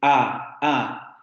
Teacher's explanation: En una A, la boca está completamente abierta, por lo que en términos generales no hay contacto entre ninguno de los órganos articulatorios, por ejemplo, la lengua no sube, etc.